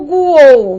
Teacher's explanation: O U é semivogal, o O é uma vogal e o U é uma semivogal. Então nós estamos lidando com um tritongo.